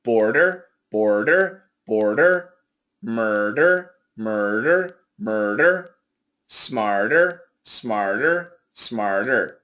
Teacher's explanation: it's like a flap T very very quick · these are words that really show the American R and the flap T being different